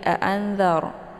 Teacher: Anzar ini ra-nya ra sukun ya, dibaca tebal. Kenapa? Karena sebelumnya berharkat fathah. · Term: ra-nya tebal